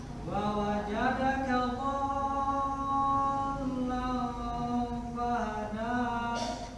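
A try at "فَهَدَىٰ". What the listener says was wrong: Fahada, kepanjangan sedikit.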